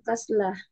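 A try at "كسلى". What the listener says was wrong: kasla, panjang dikit. Kasla,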